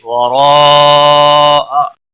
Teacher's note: وراء مد متصل ہے، 5 الف کے برابر کھینچ کر پڑھیں گے، بڑی مد ہے